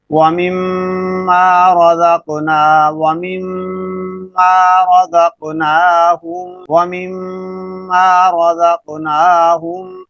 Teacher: میم ادا ہو رہی ہے، دو ہونٹ آپس میں مل رہے ہیں، لیکن ساتھ ساتھ اس کی آواز ناک کے بانسے کے اندر جا رہی ہے، کیونکہ یہ میم مشدد ہے۔